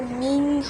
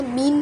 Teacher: পরেরটা মিম নুন জের মিং, এখানে কিন্তু মিং হবে, মিং বাংলায় অনুস্বরের মতো হবে, অনেকটা মিং হবে। এখানে মিন হবে না। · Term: ইকফা গুন্নার